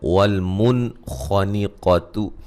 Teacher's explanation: یہاں نون ساکن کا اظہار ہے، غنہ نہیں کریں گے